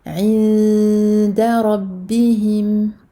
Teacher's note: Parce que j'ai ici nun sakina suivi du del et le del est une lettre des lettres de al-irfa. Donc je vais cacher le nun et je vais me préparer à sortir un del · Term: la dissimulation